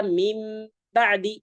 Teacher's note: nun sukun itu diganti menjadi Bunyi mim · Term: iqlab